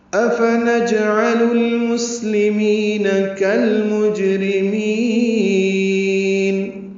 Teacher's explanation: حمزہ استفہامیہ ہے، جلدی سے پڑھیں گے، فا بھی جلدی پدا کریں گے، نون کو جیم سے ملا دیں گے، جیم ساکن پہ قلقلہ ہے